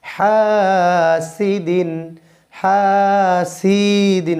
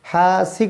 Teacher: হা চিকন করে একালিপ টান হবে।